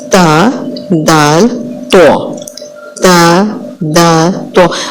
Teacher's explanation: اب تا، دال اور تو۔ زبان کی نوک جب اوپر کے سامنے کے 2 دانتوں کی جڑ کے ساتھ لگے تو تا، دال، تو ادا ہوتے ہیں